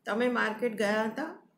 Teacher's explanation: એક પણ શબ્દ ઉપર ભાર મૂક્યા વગર બોલી જાઉં તો એ સાદું પ્રશ્નાર્થ વાક્ય હશે.